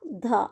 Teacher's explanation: ध हमारा दंत्य वर्ण है